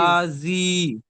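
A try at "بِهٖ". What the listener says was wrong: দেখেন আপনি বলছেন এখানে যে বাজের বি আর হা খাড়া জের হি, যেহেতু হার নিচে খাড়া জের এসছে আর খাড়া জেরটি ইয়া মাদ্দার সমতুল্য, একালিফ পরিমাণ টান দিয়ে পড়তে হবে। তাহলে বা জের বি, হা জের হি, তাহলে কি হয়, বা জের বি, বি যদি বলেন তাহলে ভুল হবে, কারণ এখানে জের এসছে, যে কি হলো হারাকাত। তাহলে বা জের বি, হা জের হি,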